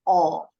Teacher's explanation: Kalau orang Inggris bunyinya lebih bulat. O. Jadi lebih monyong bibirnya. Nggak pernah bunyinya AU.